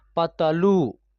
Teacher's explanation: ल में जब बड़ी ऊ की मात्रा का प्रयोग हुआ है तो इसका उच्चारण खींच करके हम लोग कर रहे हैं